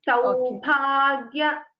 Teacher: So the Mahaprana is only for Bha. Ga is Alpa Prana.